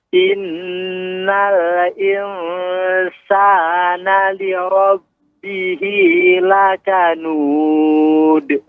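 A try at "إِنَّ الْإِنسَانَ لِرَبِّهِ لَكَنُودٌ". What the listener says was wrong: Nah, ini dalnya juga nggak boleh ada huruf hamzahnya. Lakanud.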